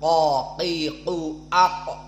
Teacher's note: maka di situ makhraj dari qof qo Qi qu AQ maka Aqsa lisan bertemu dengan alhanq alahmi bertemu dengan langit-langit yang di atas mulut kita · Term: makhraj dari qaf